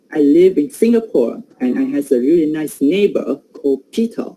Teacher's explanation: I give prominence to some syllable like sing in Singapore